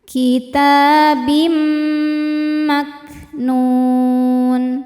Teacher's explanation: Lalu ada hukum idgham bi gunnah karena ada tanwin kasrah menghadapi mim. Cara bacanya tanwin dimasukkan ke mim disertai bunyi dengung. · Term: idghamunah